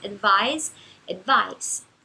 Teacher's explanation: um S entre vogais a gente pronuncia com som de Z.